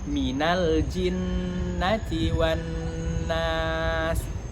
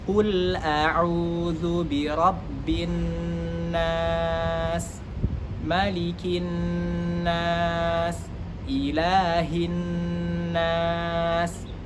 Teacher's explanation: semua huruf nun syaddah fathah atau nun yang bertasydid, yang mana termasuk ke dalam gunnah dan harus masuk ke dalam rongga hidung, karena makharijul huruf gunnah adalah al-khayshum dan memiliki panjang 2 harokat.